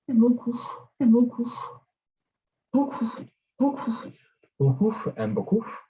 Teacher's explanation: it's like the f sound, but the lips are pursed, it's labialized, so beaucoup, beaucoup.